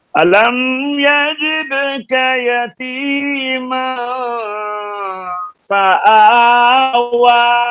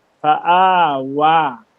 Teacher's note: فآ بھی باریک ہے، واو یہ اس کو پر نہیں کرنا، دونوں حرف باریک ہیں